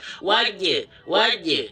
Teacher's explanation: 'Jim' seharusnya tidak mengalami kebocoran napas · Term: jahr